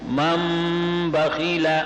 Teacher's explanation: یہ نون میم سے تبدیل ہو چکا ہے اقلاب کی وجہ سے